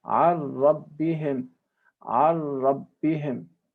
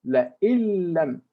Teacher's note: the noon, the na sound has completely vanished or disappeared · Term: complete merging